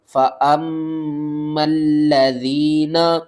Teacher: میم مشدد ہے، غنہ کریں گے، میم کو لام سے ملائیں گے، تشدید کی وجہ سے لام کو 2 بار پڑھیں گے اور سختی کے ساتھ پڑھیں گے۔